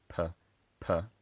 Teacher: aspirated um which is say pronounced with a little burst of air